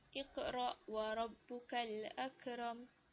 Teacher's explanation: dibaca dengan detakkan ataupun lantunan yang agak perlahan berbanding qolqolah kubro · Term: Qolqolah Sugro